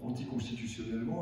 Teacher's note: Il n'y a pas une syllabe qui l'emporte sur les autres.